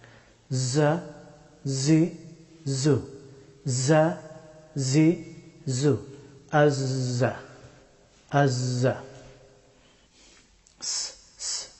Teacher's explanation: জাই হরফটি উচ্চারিত হয় জিহ্বার অগ্রভাগ এবং উপরের এবং নিচের সামনের দুই দাঁতের মধ্যখান দিয়ে